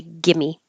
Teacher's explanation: you don't have to say the V at all you can just push it together